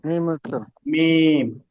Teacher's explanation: দুই ঠোঁটের শুকনো অংশ মিলিয়ে মিমটা উচ্চারণ করতে হবে